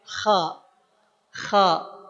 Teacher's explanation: diangkat pangkal lidah kita sehingga suaranya jadi tebal. Huruf k bukan karena ko monyong ko di kanan tapi karena k yang kemudian pangkal lidahnya diangkat k. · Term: huruf-huruf isti'la